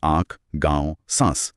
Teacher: चंद्रबिंदु जिसे अनुनासिक कहते हैं। उसके उच्चारण में हवा, नाक और मुंह दोनों से एक साथ निकलती है। अच्छा, दोनों से।